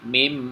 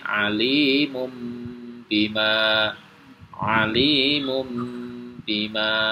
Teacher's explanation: suara nun sukun atau tanwin itu ditukar menjadi suara mim sukun kemudian mendengung dengan panjang dua harakat atau satu ayunan jadi sekali lagi caranya adalah dengan membaca nun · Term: iklab